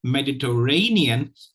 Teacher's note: the primary stress is on the fourth syllable